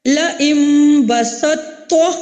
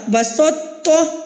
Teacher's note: تو کی صفات ہم ظاہر کر رہے ہیں، تو کو پر کر کے پڑھ رہے ہیں، اور آگے تا کو ہم باریک پڑھتے ہیں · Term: ناقص